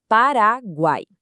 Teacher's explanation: são três sons de vogal na mesma sílaba. Olha só, em Paraguai, o U, o A e o I estão todos ali no mesmo time, na sílaba guai. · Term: tritongo